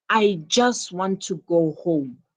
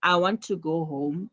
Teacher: I would say the emphasis is on just